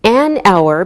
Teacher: we say an hour because we don't pronounce the H so it sounds like a vowel sound